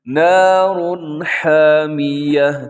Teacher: یہاں بھی تنوین کے بعد ہا ہے تو یہاں بھی اظہار ہوگا، یعنی غنہ نہیں ہوگا، آواز کو ناک میں نہیں لے کے جانا